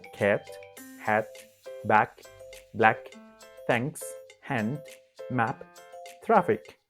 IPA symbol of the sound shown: æ